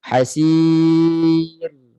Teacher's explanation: Maknanya suara itu kena mengalir sedikit. Kita tak boleh matikan hasir, sentap dia. Kena mengalir sikit suara. Hasir. Suara tu biar tinggi sikit masa nak matikan ra tu.